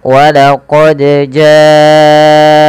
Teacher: panjangkan huruf ja-nya sepanjang 4 harokat atau 5 harokat, karena ja di sini adalah mad wajib muttasil.